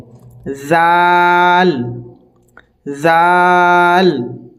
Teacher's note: দুই দাঁতের মাঝামাঝি জিহ্বাটাকে আমাদেরকে আনতে হবে এবং উচ্চারণ বের করতে হবে জাল জাল র যা এটি হচ্ছে যা আমরা অনেকেও এটিকে পড়ি জ কিন্তু এটি আসলে জ ন নয়।